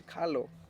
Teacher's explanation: there was no R. Closest sound to R is an L